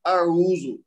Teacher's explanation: اچھا آپ نے ماشاءاللہ بہت اچھا پڑھا ہے, لیکن اس میں جو بنیادی چیز سب سے پہلے جہاں آپ سٹارٹ کر رہے ہیں نا, اس کو حمزہ کو لمبا نہیں کرنا, اس کو آؤزو نہیں کہنا, اس کو کہنا اعوذ. حمزہ کے اوپر صرف 1 حرکت دینی ہے. عین کے بعد واو مدہ ہے تو اس کو 2 حرکت دینی ہے